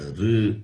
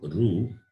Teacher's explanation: There is no rounding of lips when you pronounce R.